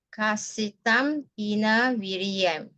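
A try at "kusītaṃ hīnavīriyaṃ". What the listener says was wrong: Ku, not ka. Viriyam. Viriyam. Not G. Kusitang hina viriyam.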